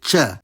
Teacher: the voiceless alveolo-palatal affricate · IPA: t͡ɕ